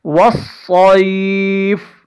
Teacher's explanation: زبر وص، صا یا زبر صی، وصی، فا زیر فی، وصیفی، حالت وقف میں فا ساکن ہو جائے گی اور اس صاد کو ہم موٹا پڑھیں گے